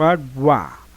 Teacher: a vogal junto com a semivogal, como no caso aqui de água. O U é bem mais fraco.